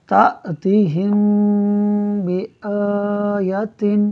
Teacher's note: میم ساکن کے بعد با ہے، لہٰذا یہاں اخفاء شفوی ہوگا، یعنی میم ساکن میں ہم غنہ کر کے پڑھیں گے